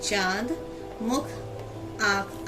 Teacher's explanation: इसका उच्चारण नाक और मुंह दोनों से होता है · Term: अनुनासिक